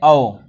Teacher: अर्ध विवृत जो आधे से थोड़ा ज्यादा मुख खुलता है